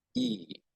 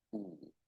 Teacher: E is a high vowel, but it's also a front vowel, while Oo is a back vowel